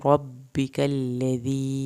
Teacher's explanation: रॉ को पुर करके पढ़ना है, काफ नरम पढ़ना है, या साकिन को खींच के पढ़ना है